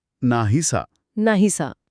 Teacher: नाही मधला शेवटचा इ हा स्वर कायम राहिला कारण हा पूर्व स्वर आहे आणि असा मधला अ उच्चारातून गायब झाला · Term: पूर्वरूप संधीची